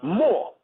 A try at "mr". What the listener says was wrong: Yes, you're wrong. Yes, you're wrong. M-R is pronounced Mary, not more.